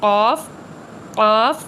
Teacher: जुबान की जड़ और तालु से